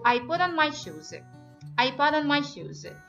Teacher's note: I would like you to say it like American accent. So try to make this T like D sound. Light D sound and then connect between put and on.